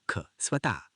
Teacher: विसर्ग म्हणजे श्वास सोडणे याचा उच्चार किंचित ह सारखा होतो